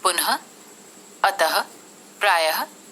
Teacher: विसर्ग, इसका उच्चारण ह की तरह होता है